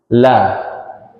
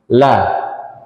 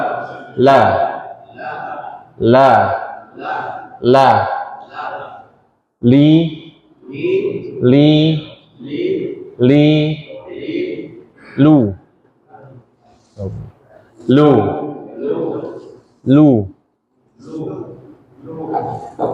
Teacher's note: posisi lidahnya menempel ke langit-langit bagian depan. Di atas gigi seri, ya, di atas gusi sedikit. La. Ingat, bukan hanya ujungnya, tapi bagian kanan kiri juga. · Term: huruf lam